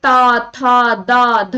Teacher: आप बोलिए ता, था, दा, धा। देखिए जो जिह्वा है वो दांतों को स्पर्श कर रही है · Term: दंत वर्ग